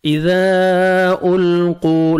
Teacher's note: اذا القوا لام کو آپ نے ہلانا نہیں ہے. قوف کو موٹا کر کے پڑھنا ہے